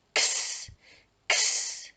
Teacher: Now that phoneme is quite hard to say because it is when you think two sounds joined together. It's the k and the s together.